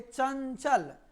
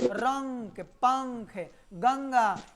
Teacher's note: नाक में जो है झंझनाहट उत्पन्न होगा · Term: अनुस्वार